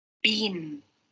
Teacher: the ending sound of the word bean is n. It is a nasal sound, and you can also see on the video when she said bean, the velum is lower, and there are some airstream going through the nose.